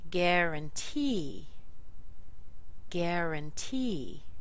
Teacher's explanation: Gar is what we call a secondary stress.